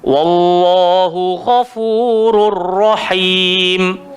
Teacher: idgham bila ghunnah, memasukkan tanwin ke dalam ra tapi tak ada dengung